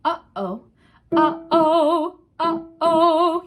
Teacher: So your glottis is closed. You're starting the air after your glottis is closed, and then your voice opens and closes around that air, and that's what makes the sounds. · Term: glottal